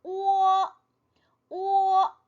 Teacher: 중요하죠 그렇죠 a 아 아 소리가 났었고 그다음에 오는 어떻게 됐어요 그냥 오로 끝나는게 아니라 오어 오어 이렇게 소리가 났었죠 그다음에이는이는 원래 어 소리인데 예 의로 시작을 한다 그랬죠 그래서 으어